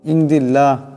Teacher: আল্লাহর লামের ডাইনে জের আসছে এখানে আল্লাহর লামকে পাতলা আওয়াজে পড়তে হবে